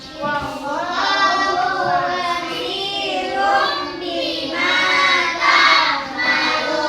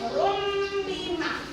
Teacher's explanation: Tanwin bertemu dengan huruf ba. Ditukar bunyi ba ini menjadi mim. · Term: Iklab